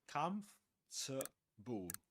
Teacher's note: it has 4 syllables in spelling, but actually it's pronounced in 3 syllables only · We don't pronounce the O nor the R.